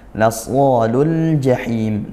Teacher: Lasolul jahim lul ini ada al bertemu huruf jim izhar qamariyah al bertemu huruf qamariah huruf jim dibaca jelas lamnya